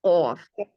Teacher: قوف میں جو آپ کا بالکل جڑ ہے زبان کی، وہ آپ کے کوے کے اگلے نرم حصے سے لگ رہی تھی، تو قوف ادا ہو رہا تھا.